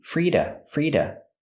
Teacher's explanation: the to is pronounced da with a fast D.